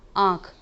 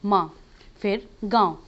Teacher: तो फ्रेंड्स, इन तीनों वर्ड के उच्चारण में आप ध्यान से देखिएगा कि जो ध्वनि निकल रही है बाहर, जो हवा हमारे मुख से बाहर आ रही है, मुख के साथ साथ वो नाक से भी बाहर आती है। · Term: अनुनासिक